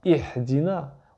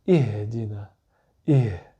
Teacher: La lettre H, c'est un H expiré. C'est assez doux, d'accord? C'est comme le H en anglais dans home.